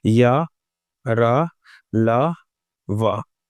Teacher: आपने हवा को रोकने का प्रयास तो किया, लेकिन पूरी तरह से हवा को रोका नहीं। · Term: अंतस्थ व्यंजन